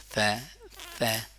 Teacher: تو سی ذال کا اس سے پہلے میں نے آپ کو مخرج بتایا، ثا ذال اور ضا ایک مخرج سے ادا ہوتے ہیں. ثا جب زبان کو دانتوں کے اوپر رکھ کے سامنے والے بندے کو دکھاؤ کہ یہ میرا زبان ہے تو ثا ادا ہو گیا